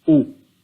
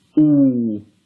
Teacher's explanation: Hamzah, Dhamma, U. which equals 1 beat, and if we said Hamza, Dhamma, Waw, Ooh, and that equals 2 beats.